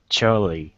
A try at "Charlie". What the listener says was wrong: Instead of Charlie, cha, it's char for the R. Charlie.